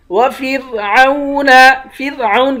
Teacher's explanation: فرعون کی را کو باریک کریں گے